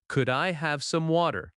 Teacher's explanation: Water sounds like wader in American English. Soft T, smooth rhythm.